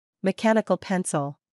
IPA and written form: mi'kænikl 'pensl (Mechanical pencil)